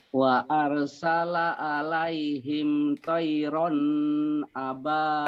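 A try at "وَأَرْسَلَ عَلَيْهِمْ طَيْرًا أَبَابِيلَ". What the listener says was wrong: Tayrannya kenapa ditahan? Bandel ya. Tayran. Tayran.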